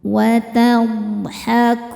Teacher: Huruf dhad punya sifat yang tidak memiliki lawan, namanya istiltolah. Istiltolah artinya memanjangkan makhrajnya ya.